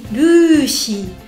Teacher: En japonais quatre caractères lu on allonge le U. Chi on allonge le I. Lu si alors vous allez me dire mais pourquoi si pourquoi pas si on utilise le chi ça si c'est sa on prend le dans la gamme des saut faites bien attention de bien allonger les voyelles.